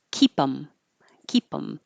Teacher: just get rid of the th and then you connect the P to the em and it's keep them keep them um this connection it should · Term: delete the th